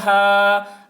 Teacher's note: الف سے پہلے زبر ہے، الف مدہ ہوا، اس لیے الف مدہ کو ایک الف کے برابر کھینچ کر پڑھیں گے